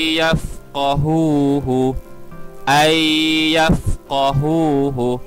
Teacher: merah ini adalah idgham maal ghunnah yaitu kita perlu masukkan dan membaca dengan dengung kadar dua harkat bunyi huruf nun kita masukkan ke dalam huruf ya